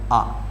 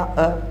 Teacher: लेकिन जब अपना मुंह आधा खुला हुआ होगा तो आ। जब आ बोला जाता है तो मुंह पूरा खुल जाता है और जब बोलते हैं अ तो मुंह क्या हो जाता है? आधा खुलता है